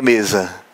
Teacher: de fato, a sílaba mais forte está aqui no me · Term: sílaba tônica